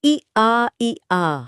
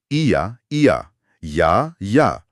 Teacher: जब आप इ और आ को तेजी से एक साथ बोलने की कोशिश करते हैं। इ आ इ आ। हां। तो आपकी जुबान अपने आप य की आवाज निकालती है।